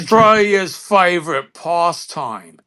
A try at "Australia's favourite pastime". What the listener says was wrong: No, you put too much pommy in there. You were almost there until you said the past.